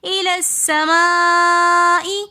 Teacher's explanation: الی السماء میں مد متصل ہو رہی ہے. مد متصل کو بھی ہم 3 فنگرز کی مقدار کھینچ کر پڑھتے ہیں